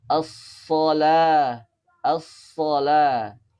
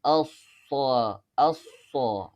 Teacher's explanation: pengucapan huruf shod tidak boleh membulatkan bibir